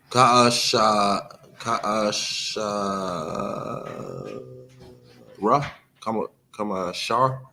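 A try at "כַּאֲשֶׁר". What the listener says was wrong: Yeah, you said that one right.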